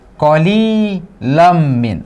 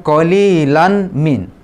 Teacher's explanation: Sekarang ada kita ketemu yang kedua hurufnya ya, yaitu mim. Maka kita juga dileburkan tanwin ini ke dalam huruf mim. Kemudian ini juga bertasdid dan berdengung. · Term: idgham bi gunnah